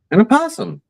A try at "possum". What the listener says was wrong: No, it's not an opossum. It's a possum. Like, what is that? What animal is that? That's a possum. Not a. That's a. opossum. That's more work.